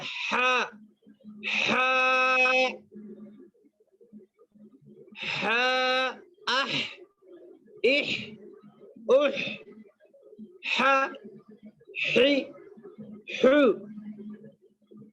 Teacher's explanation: یہ جو بڑی ہا ہے یہ ہا بیچ حلق سے ادا ہوتی ہے. اس کا ادا کرنے کا طریقہ ہے ہا، ہا، ہا، اح، اح، اح، ح، حی، حو.